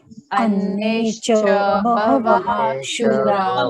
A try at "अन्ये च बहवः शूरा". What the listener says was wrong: नहीं है, श नहीं है, अन्येश्च नहीं है, अन्य उसके बाद विसर्ग नहीं है, स नहीं है, श नहीं है, अन्य उसके बाद डायरेक्टली च आता है, अन्ये च बहवः शूरा